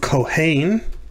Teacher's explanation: it's the second syllable that's accented